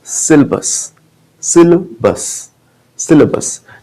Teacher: जो इसमें अ है वो आधा अ है, हल्का सा